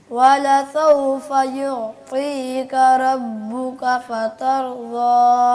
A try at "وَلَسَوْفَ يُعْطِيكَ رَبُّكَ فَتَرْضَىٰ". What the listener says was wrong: ٹھیک ہے, ربک میں را موٹا نہیں ہوا, دوبارہ پڑھیے گا. کاف باریک ہے, را موٹا ہے. یعطیک ربک.